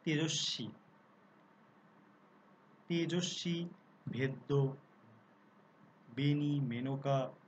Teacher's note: তৎসম শব্দের আদ্য একার প্রায়শ অবিকৃত রূপে উচ্চারিত হয়